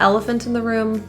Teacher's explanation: In the word elephant, there are a couple schwas. The second E is an rather than ella.